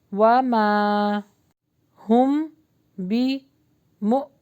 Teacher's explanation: ہم نے جھٹکا دیا ہے کیونکہ حمزہ کے اوپر جزم آ رہا ہے۔ بمؤمنین، اور با کے نیچے زیر یعنی کسرہ ہے تو اس کو بی کا ساؤنڈ دیں گے، ای کا ساؤنڈ دیں گے۔